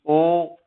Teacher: तो ये दोनों जगह से मिलकर बनेंगे, जब दोनों से आवाज निकलेगी तब ये उच्चारित होंगे, जैसे ओ, ठीक है, तो कंठ से तो निकल ही रही है और साथ में होठ भी, ओ होठ गोल हो रहे हैं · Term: कंठोष्ठ स्वर